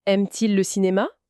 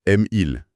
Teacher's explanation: Ce « t », il est juste là pour que ça sonne mieux, pour éviter le hiatus. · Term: le petit « t »